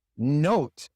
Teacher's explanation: In note, the vowel sound is O, but that is actually two sounds. O. Note.